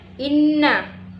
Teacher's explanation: Selanjutnya inna gunna musyaddah, karena ada huruf nun yang bertasydid. Cara membacanya dengan masuk dengan mendengung